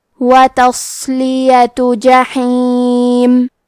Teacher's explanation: کلمت وتصلیہ میں حرف الصاد کو بھاری آواز میں پڑھنا ہے، اور کیونکہ یہاں صاد ساکن ہے تو ہم یہ حرف کو ہمزے سے پڑھیں گے.